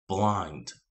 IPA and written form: blaɪnd (blind)